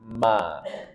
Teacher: Makhrajnya dari 2 bibir dipertemukan dan dirapatkan. Disertai gunnah dari rongga hidung. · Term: mim